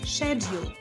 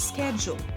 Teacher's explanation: British English, pronounced with a sh sound at the beginning, like in shoe · American English, pronounced with a sk sound at the beginning, like in school